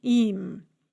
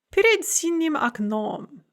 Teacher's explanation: that's the soft front e followed by m, im.